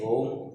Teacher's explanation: प्लुत स्वर क्या होता है? इनमें 3 गुना समय लगता है